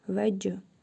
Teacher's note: Və cim hərfinin üzərində cəzm var. Vurğulu tələffüz edirik. Qalqalə edərək.